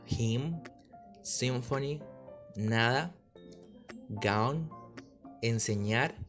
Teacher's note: se baja el velo permitiendo que el aire escape por la nariz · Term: consonante nasal